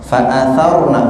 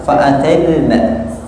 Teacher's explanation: Ro-nya ro fakhama yufakhimu tafkhim tebal.